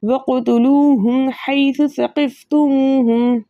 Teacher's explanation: साकिन हर्फ की आवाज़ इसके मखरज में रुक जाती है, लेकिन क़ाफ हर्फ मुकल्कल में से, इसलिए इसकी आवाज़ इसके मखरज में रुकेगी नहीं बल्कि पलट कर वापस आएगी · वाव मद्दा है, दो हरकत की मकदार खींच कर पढ़ा जाएगा